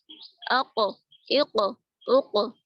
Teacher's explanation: اب قاف میں قلقلہ ہوگا اور قاف میں قلقلہ واجب ہوتا ہے